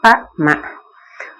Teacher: மேலுதடும் கீழுதடும் தம்முள் பொருந்துவதால் தான் பகாரம் மகாரம் 2 பிறக்கும் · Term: பகார மகாரம்